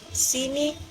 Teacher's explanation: vokal I dalam kata sini memiliki posisi mulut yang tertutup